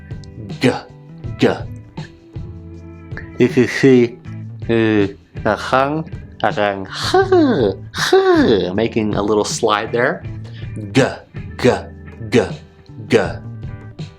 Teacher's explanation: sound of the g the g sound is valor which means we should place the back of our tongue between our hard and soft palate